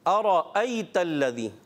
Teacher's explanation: इसी तरह दूसरा हमज़ा, बीच में रा आ रहा है, रा को हमने क्या करना है? मोटा करना है, पुर करना है